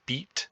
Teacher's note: the high front vowel is beat